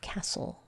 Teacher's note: when we have this stle e combination the t is silent